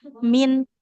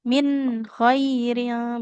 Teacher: Nah, izhar nunnya dibaca jelas ya